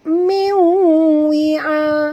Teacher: Nun mati merah, nampak tu warna merah bertemu dengan waw, kena masukkan bunyi nun itu ke dalam waw disertai dengan dengung 2 harakat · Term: idgham ma'al gunnah